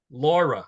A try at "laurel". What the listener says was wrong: Laurel. Laurel with an L at the end.